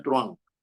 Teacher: la U y la A, así tengan la H intermedia, forman un diptongo